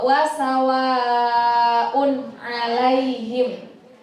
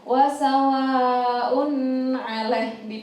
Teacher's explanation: Domatain apabila bertemu dengan salah satu huruf idhar halqi yaitu ain, maka hukum bacaannya adalah idhar halqi yang harus dibaca dengan jelas. Berarti wasawaun alaihim.